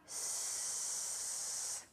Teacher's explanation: Now try s. You see? There is no vibration.